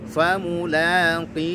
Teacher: Famulaqih, dan ujungnya ada huruf ha. Huruf ha itu punya sifat, diantaranya ada sifat rokhawah. Alirkan bunyi ha-nya. Famulaqih, ya, alirkan bunyi huruf ha-nya.